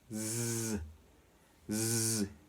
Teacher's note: Esta viene siendo la S vibrante en inglés, que aparecerá así como una Z.